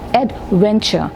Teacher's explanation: here the syllable stress is on the middle syllable